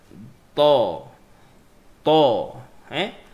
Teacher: Makhraj dia hujung lidah pergi ke belakang gigi atas. Lepas tu pegang lidah nak kena naik. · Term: huruf ta